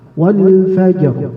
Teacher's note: Misalkan wal fajr beda, karena zaman atau waktu yang diperlukan untuk mengucapkan tadi jim yang sukun itu nggak boleh lama, dia harus singkat